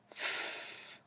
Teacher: does it vibrate do you feel it no it is voiceless · So we have labiodental, fricative, voiceless. That is f.